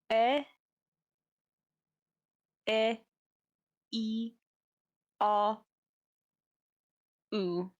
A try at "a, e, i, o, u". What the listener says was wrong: Closer, the first A was still very in English.